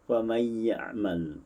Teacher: berbeza dengan bacaan riwayat Khalaf, dibaca dengan idgham bila ghunnah. Faman ya'mal, dimasuk tanpa didengungkan